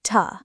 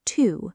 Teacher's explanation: the word to often sounds like ta in I want to go, rather than its strong form to. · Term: weak forms